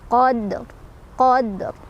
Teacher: Karena huruf qalqalahnya sudah sukun dari sananya, jadi sukunnya sukun asli, bukan karena berhenti. Cara bacanya adalah dipantulkan, pantulannya kecil aja ya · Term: qalqalah sughra